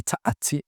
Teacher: Esta tsa es un sonido complejo, o sea, no son 2 consonantes, es un solo sonido, Sí. pero se usan 2 elementos gráficos.